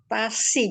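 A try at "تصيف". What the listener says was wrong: Tapi sod ini hurufnya huruf tebal. Kalau sin hurufnya huruf tipis. Kalau tidak diangkat, tasi, gitu.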